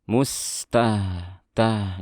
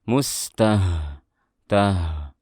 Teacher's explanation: Makrosnya bukan di dada tapi di pangkal tenggorokan.